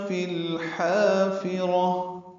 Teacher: فی الحافرہ میں لام ساکن پہ اظہار ہے، فی اور الحافرہ ملا دیا گیا. لام ساکن پہ اظہار قمری، حا الف مدہ وسط حلق سے ادا ہوگا، را پر پڑھیں گے اور تاء مربوطہ پہ وقف ہو جائے گا، ہا میں تبدیل ہو جائے گی.